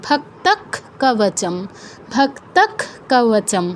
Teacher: তাই আমাদের উচ্চারণটা হবে ক্ষয় হসন্ত